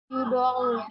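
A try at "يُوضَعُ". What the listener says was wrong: Ya jadi nggak panjang. Nggak panjang ya-nya. Jangan yudong. Bukan ya. Yudong.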